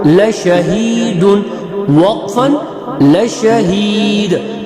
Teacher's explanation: دو چشمی ہا سینے سے نکلنے والی